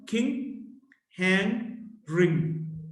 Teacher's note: Ng, voiced, velar nasal